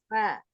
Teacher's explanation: Fa fa adalah bibir bawah yang basah bertemu dengan gigi seri atas. Ujung gigi seri atas.